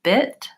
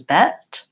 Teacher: So I, like it, or let's try it with the word bit, B-I-T, has this vowel, and the word bet, B-E-T, has this vowel. And so the difference between I and eh is that my mouth is more open for eh. So bit versus bet, or bid versus bed.